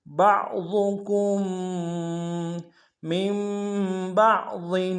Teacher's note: بعضکم میں با کو عین کے ساتھ ملانا ہے، عین کو ہرے سے ادا کریں گے اور ضاد کو موٹا ادا کریں گے، کاف کو آگے میم کے ساتھ ملانا ہے، میم کے اوپر تشدید زور دیں گے۔